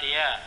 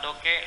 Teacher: Fonem konsonan D adalah fonem letus apiko-alveolar bersuara. Fonem ini dalam distribusinya menduduki posisi awal dan tengah.